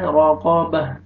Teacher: रा को मरज़बर है, रा को मोटा करके, कौफ को भी मोटा करके पढ़ना है